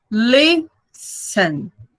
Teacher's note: Tem 2 sílabas. Listen. A mais forte é a primeira.